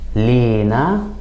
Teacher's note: in Egyptian, we tend to put some stress on the first syllable and add kind of an E sound, so it would sound more like Lina.